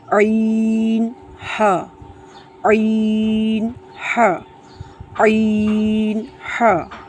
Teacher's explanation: یہ حلق کے درمیان والے حصے سے ادا ہوتے ہیں